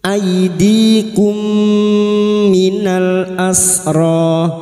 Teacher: Mim sukun bertemu mim idgham mimi, memasukkan atau mentasdidkan 2 mim. Masuk pada huruf mim berikutnya disertai mendengung selama 3 harokat.